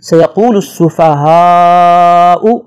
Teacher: بڑی مد ہے، اسے 6 حرکت کے برابر لمبا کر کے پڑھیں گے۔